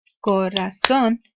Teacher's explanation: you can hear la fuerza de voz in la última sílaba